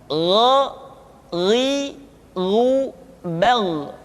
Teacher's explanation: Diucapkan seperti kita mengucapkan huruf Kha, yaitu diucapkan dari pangkal tenggorokan kita. Yang membedakannya adalah Kha mengalir nafas dan Gha tidak mengalir nafas. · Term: huruf Gha